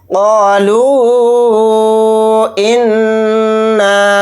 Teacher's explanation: इस मद को हम 3 अलिफ की मिक़दार खींच कर पढ़ेंगे लाम वाव पेश लू के साथ। इस तरह से खींचेंगे, क़ालू इन्ना। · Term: मद्द मुनफसिल